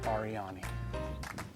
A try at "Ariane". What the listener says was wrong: Do you think it was just Ariane? And the E was silent? Or it was an A, Ariana, and as a kid, the E was like an A, and you were not sure.